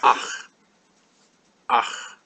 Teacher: it's pronounced way down in the bottom of the throat